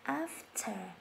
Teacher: After âm T hơi bật ra một chút ạ.